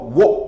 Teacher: 그 다음에 워 같은 경우는 반모음 우가 먼저 발음되고 단모음 어가 발음돼서 워 이런 식으로 해서 상향 이중모음이 된다.